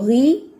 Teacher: اب غو جو ہے اس میں بھی زبان کی جڑ اٹھاتے ہیں. جو غی ہے اس میں آپ زبان کی جڑ اتنی نہیں اٹھاتے، تھوڑا سا ہیوی ہوتا ہے، چونکہ زیر ہے تو اس کی وجہ سے وہ باریک بھی پڑا جاتا ہے، لیکن زبر اور پیش کی صورت میں اچھا خاصا موٹا ہوتا ہے.